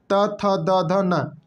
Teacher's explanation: त थ द ध न दंती व्यंजन दांत से बोले जाते हैं अब आपका पचवा आता है प फ भ ब म मतलब